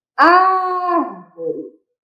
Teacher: O ar saiu com maior intensidade, que é a antepenúltima sílaba. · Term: proparoxítona